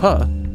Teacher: we can describe a place of articulation for the sound puh this is bilabial because that sound uses the lips exclusively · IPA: [p]